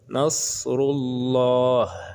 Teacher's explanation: ini dibaca dengan tebal apabila kalimah Allah ini bertemu baris ataupun bacaan u ini ataupun dhamma. Apabila bertemu dengan lam tasydid kalimah Allah, maka dibaca dengan tebal.